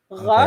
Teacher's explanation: Ra is more at the back of your throat, but the top back of your throat.